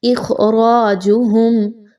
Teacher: خا حروف مستعلیہ میں سے اس لیے اس خا کو پر پڑھا جائے گا، جبکہ را جو ہے اس کے اوپر حرکت آ گئی ہے زبر کی تو اس وجہ سے اس را کو بھی پر پڑھا جائے گا، باریک نہیں رکھنا۔